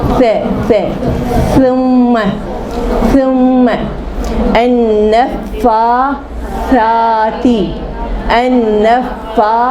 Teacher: دیکھو زبان باہر نکالی، ثم. ثم زبان نکالے بغیر نہیں نکلے گا، زبان نکالنی ہے